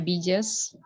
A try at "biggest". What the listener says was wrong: Bukan biggest. Bukan biggest ya. Biggest huruf G. ini dibaca huruf G. Bukan J ya.